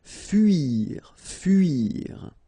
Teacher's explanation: so it's not OU, it's really narrow, it's U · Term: this U sound